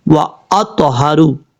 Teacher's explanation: تا حروف مستعلیہ میں سے پر پڑھا جائے گا، اور یہاں پہ قلقلہ بھی ہوگا ، کیونکہ حروف قلقلہ جب ساکن ہوں تو ان میں قلقلہ